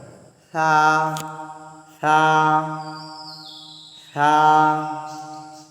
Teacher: জিহ্বার আগা উপরের দাঁতের আগার সাথে লাগাইয়া আমাদের সা উচ্চারণ করতে হয়